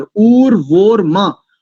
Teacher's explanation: उर्वोर में नहीं है, मां है, ए नहीं है वहां पर, उर्वोर मां, और उकार दीर्घ है, इसको भी ह्रस्व बोलते हैं